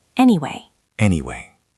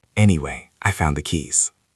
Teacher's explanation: It usually starts high and goes down. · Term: intonation